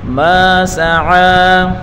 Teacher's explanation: میم الف زبر ما الف مدہ ہے ایک الف کی مقدار کھینچ کر پڑھیں گے، سین کے اوپر پڑھی حرکت ہے بغیر کھینچے پڑھیں گے، اور عین کے اوپر کھڑی حرکت ہے اس کو ایک الف کی مقدار کھینچ کر پڑھیں گے۔